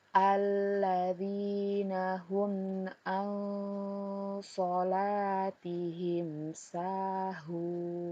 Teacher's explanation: Pada garis kuning ini adalah contoh hukum bacaan iqfa hakiki. Nun sukun bertemu dengan huruf so, maka kita membacanya disamarkan disertai dengan dengung.